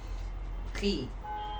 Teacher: Kemudian sin fathah sa, kha kasrah khi. Nah, kha termasuk dari huruf tafkhim, kan tetapi ketika dia itu berharkat kasrah maka cara bacanya syabihan bil muraqqaq, artinya disamakan dengan huruf yang tipis ya